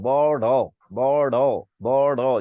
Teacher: আচ্ছা এখন আসুন, এখন বিষয়টা হচ্ছে যে আপনাকে জিহ্বাটা কাঁপতে হবে। আর তারণজাত মানে জিহ্বাটা একটা ঘোরানো দিবে, বড় বড় বড়, জিহ্বাটা ঘোরানো দিবে, এটাকে বলে তারণজাত।